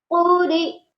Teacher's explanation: یہاں بھی دیکھیں اس لفظ کے ہجے ایسے کریں گے: قاف پیش قو، را زیر ری، قوری، حمزہ زبر ا، قوری ا، وقفا قوری. آخر میں حمزہ پر وقف کرنے کی صورت میں جھٹکا دے کر وقف کیا جاتا ہے. حمزہ پر ہم وقف کریں گے تو جھٹکا دیں گے.